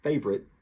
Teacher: this favorite as we'll see is often reduced to two syllables